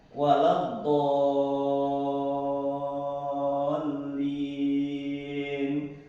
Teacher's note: Cara membacanya itu panjang gitu, 6 harakat atau 3 alif. Jadi nggak bisa waladdallin, jadi harus dipanjangkan waladdallin. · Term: mad lazim mustaqol kilmi